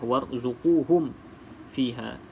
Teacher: hukum bacaan ra dekat sini ra tafkhim, iaitu kita kena baca dengan tebal lah.